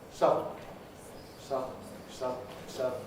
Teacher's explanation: it doesn't need an actual vowel between the D and the N. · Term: nasal release